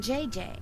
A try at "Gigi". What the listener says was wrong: Gigi. En français, you pronounce G like J and J like G. She may very well be JJ in America, but in France, she is Gigi.